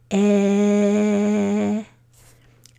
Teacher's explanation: In my mouth, my tongue is touching my bottom teeth. And my vocal cords are vibrating. My lips are a little bit pulled back.